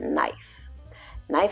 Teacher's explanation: knife has a K in the beginning but you don't hear it it's silent